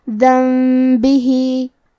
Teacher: آخری میں حرف الہا کے نیچے کھڑی زیر ہے اور اس پہ مد کا علامہ ہے. یہ مد صلہ کبریٰ ہے. ہم اپنی آواز 2 سے 4 مد کے برابر لمبی کریں گے.